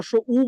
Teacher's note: আরেকটা ব্যাপার হলো দেখেন আপনি যখন রসই বলেন আপনার ঠোট এরকম চেপটা হয়ে যায়। যখন আপনি রস উ বলেন ঠোট আপনার গোল হয়ে যায়